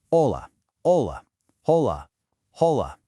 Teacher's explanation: The H in hola is completely silent. You literally just pronounce the O.